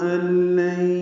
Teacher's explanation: ال میں ان اور لام آیا ہے نون ساکن کے بعد، یہ ادغام کامل ہے، ال پڑھیں گے. لین میں بھی ادغام ہے، یہ ادغام ناقص ہے مع الغنہ.